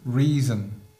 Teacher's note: le O de reason, il n'est pas prononcé comme reason, pas du tout, il est prononcé comme un schwa, un E atténué